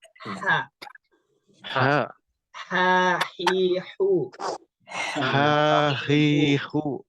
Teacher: H juga ini sama hurufnya. Dia keluar dari tengah-tengah tenggorokan.